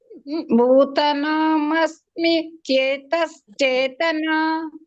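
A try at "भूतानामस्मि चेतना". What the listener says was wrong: ಭೂತಾನಾಂ ಅಸ್ಮಿ ಚೇತನ. ಭೂತಾ ದೀರ್ಘ ಇದೆ. ಭೂತಾನಾಂ ಅಸ್ಮಿ.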